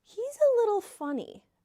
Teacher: So pay attention to the intonation and notice I said, a little funny with downward intonation